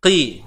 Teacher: Huruf qaf baris bawah. Tebal juga. Cuma disebabkan dia baris bawah, maka tebalnya berkurang lah